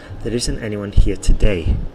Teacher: The stress is on today. Okay? Because I want to emphasize that actually today there isn't that many people here, or there's nobody.